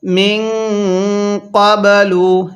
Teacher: এই নুন সাকিনের পরে কফটি হলো ইকফার হরফ, এই জন্য নুন সাকিনটা গুনাহ করে পড়ব